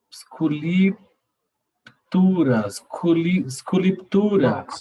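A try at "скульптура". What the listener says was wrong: Non, sans I, c'est un signe comme sculpture, sculptura. Sculptura.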